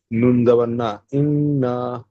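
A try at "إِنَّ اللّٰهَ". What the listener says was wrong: নুন জাবার না নয়, নুন লাম জাবার নাল, দুটো একসাথে পড়তে হবে। হ্যাঁ, আলিফটা বাদ দিতে হবে, দিয়ে লামটা ধরতে হবে।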